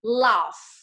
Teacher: âm F ở cuối thì môi răng ở cuối nha